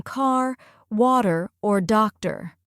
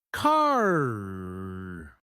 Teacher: American English is what we call rhotic, meaning the R sound is emphasized even at the end of words. In contrast, in British English, that R is often silent.